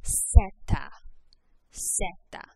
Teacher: there's no Z sound in Spanish. You'll never make a Z. Instead, the Z makes a S like an English S. So the letter name is pronounced Zeta.